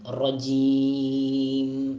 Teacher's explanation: നമ്മളീ തറ പറ എന്ന് പറയുന്ന ആ ഉച്ചാരണമല്ല റായിനുള്ളത് അറബിയിൽ, നമുക്കറിയാലോ. കുറച്ച് ഒന്ന് കനപ്പി തഫ്ഹീമാക്കി ഉച്ചരിക്കേണ്ടതാണ് റ.